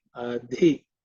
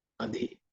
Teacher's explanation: It should be mahaprana. Okay. With extra air. · the dhi is using the fourth letter in the ta varga. So it has to be aspirated. Adhi. It should be mahaprana.